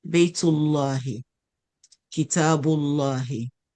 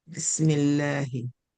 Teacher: it is heavy, tafkhim, pronounced with a full mouth when the preceding letter has a fatha or dhamma